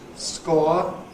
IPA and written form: skɔə (score)